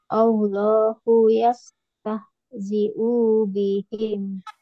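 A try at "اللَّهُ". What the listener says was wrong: Punya pendek. Ini panjang. Allahu.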